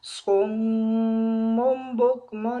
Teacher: یہ صُمٌّ میں آپ دیکھیں کہ میم کے بعد ایک چھوٹا سا میم اوپر نظر آ رہا ہے آپ کو، تو یہ تجوید کا ایک قاعدہ ہے، اس کو کہا جاتا ہے اقلاب، کہ جب تنوین کے بعد آگے با آ جائے تو وہاں پر میم جو ہے وہ پڑھا جاتا ہے